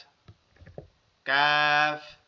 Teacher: জিহ্বার গোড়া থেকে একটু আগে বাড়ায়া মধ্যকান পেঁচানো কাফ। কাফ, মানে না হবে জিহ্বার মধ্যকান, না হবে জিহ্বার গোড়া, না হবে জিহ্বার মধ্যকান, না হবে কি জিহ্বার গোড়া। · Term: মধ্যখান পেঁচানো কাফ